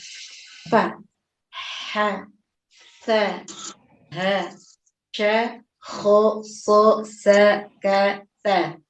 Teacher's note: Dan ini kesemuanya ada nafas ucapannya. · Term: hamas